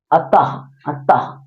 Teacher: इसमें आधा हा आता है हलंत के साथ हा आता है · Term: विसर्ग